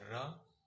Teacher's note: लुठित व्यंजन इसके उच्चारण में जीभ लुढ़कती है।